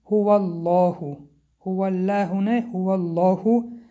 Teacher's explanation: حرف لام را که در کلمه الله است غوص خواندیم به سبب آنکه پیش از کلمه الله فتحه آمده است